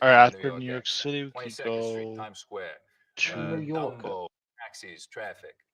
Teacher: The tongue tip hits the teeth or close to them on TDN sounds instead of you know a little further back. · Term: Tongue tip on the teeth